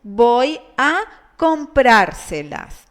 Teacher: does not have the tonic syllable in the penultimate syllable according to the rules of pronunciation but in the anti-penultimate syllable